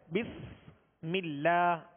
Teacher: بسم اللہ، یہاں سین ہے، سین کو سختی کے ساتھ ادا کریں گے۔ بسم اللہ، اللہ عز و جل کے لام سے پہلے زیر، لہذا باریک پڑھیں گے